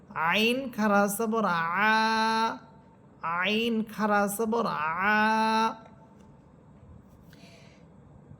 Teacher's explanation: হরফ আইন, কণ্ঠনালীর মধ্যখান থেকে